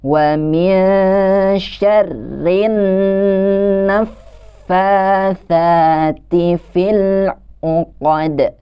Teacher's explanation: Di situ ada nun yang bertasydid yang juga ketika membacanya kita harus ditahan selama sepanjang dua harokat.